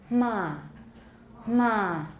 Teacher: just say um and you can't really hear the m very clearly unless you put a vowel after it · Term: voiceless nasals